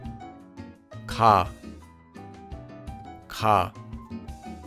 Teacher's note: Notice how it's not ca and it's not ga, but it's ca. This sound is between a k and a g in English.